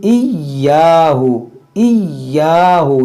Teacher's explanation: या मुशद्दद है, इसको दो बार पढ़ेंगे